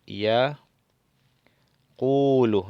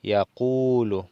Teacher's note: Por lo tanto, esta lleva sukun y debe ir acompañada, prolonga el sonido de la vocal anterior, que es la U. Y aqulu prolonga el sonido de esta vocal.